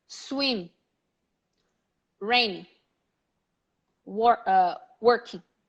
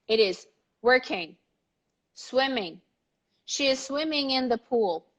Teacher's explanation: we mean it's raining it kind of dies there the syllable the ing syllable is usually low but it's present